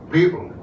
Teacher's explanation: the first part is very strong and the second part tails out